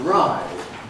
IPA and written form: raɪd (ride)